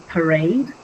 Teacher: a foot of verse made up by an unstressed syllable followed by a stressed syllable. Like I gave that example before, like in parade, pa would be one syllable.